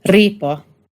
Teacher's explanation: This was an R made in the same spot in your mouth as a D sound. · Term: rolled R